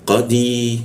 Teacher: Qa di siku tenggorokan, lidahnya dinaikkan sehingga tidak ada hembusan udara ketika membaca qa